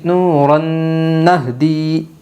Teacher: ادغام مع الغنہ ہوگا دو زبر تنوین کے بعد۔ یمن کے 4 حرفوں میں سے نون آئی ہے، اس لیے دو زبر تنوین کو غنہ کے ساتھ ملا کر پڑھے گے